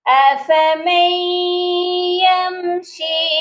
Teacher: یہاں پر ادغام ہوگا، وہ بھی غنے کے ساتھ، کیونکہ جب بھی نون ساکن کے بعد 4 حروف یا میم واو نون آتے ہیں تو ادغام کیا جاتا ہے، اور وہ بھی غنے کے ساتھ۔